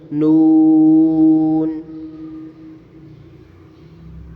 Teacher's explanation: ناک میں آواز نہیں لے کے جانی، منہ سے پڑھنا ہے